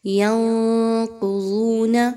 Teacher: قاف موٹی، ضاد بھی موٹی پڑھی جائے گی، دونوں حروف مستعلیہ ہیں